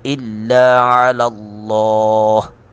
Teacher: علی اللہ لام کو پر کر کے پڑھیں گے